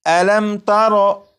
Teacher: یہ میم ساکن ہے، میم ساکن کے بعد تا ہے، جب میم ساکن کے بعد تا ہے تو اس میم ساکن میں غنہ نہیں کریں گے